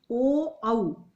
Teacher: ओ औ दोनों कंठ, गले से इनकी आवाज आती है और दोनों हमारे होठ गोलाई में मुड़ते हैं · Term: कंठोष्ठौ